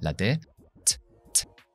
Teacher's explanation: Mucho más que en castellano, la T, t, t. Mucho aire. Y fíjate que no hay sonido de voz. · Eso quiere decir que hay una explosión. Detengo el aire y luego t, sale. T. Mucho más que en castellano, la T, t, t. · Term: consonante oclusiva